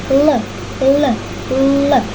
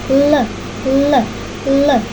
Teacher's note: Pita suara bergetar sehingga menghasilkan bunyi suara.